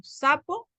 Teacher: si nosotros decimos zapato y nosotros decimos sapo es el mismo sonido de la s